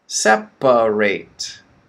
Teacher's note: 3 syllables. The middle one is the schwa, right?